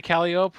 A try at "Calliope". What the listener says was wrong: There's an E at the end.